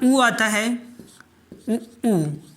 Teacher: ऊ का उच्चारण स्थान ओष्ठ होता है, ओष्ठ।